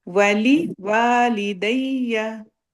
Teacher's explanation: Okay, जो है ना वाली वाली दैया, कभी हम कह देते हैं वाली वाली दैया, कभी कहते हैं वाली वाली दैया। नो, पहले वाव जबर वा है, फिर वाव जबर अलिफ है, पहले वा छोटा होगा, फिर वा लंबा होगा।